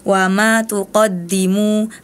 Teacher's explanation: Harusnya mimnya dibaca panjang karena itu mad thi zahiri panjangnya dua harakat.